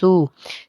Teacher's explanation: سین جو ہے حرف صفیریہ کا حرف ہے تو سیٹی کی آواز ادا ہوگی